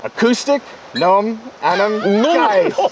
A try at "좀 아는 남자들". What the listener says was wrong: 놈. It's not 놈. 좀.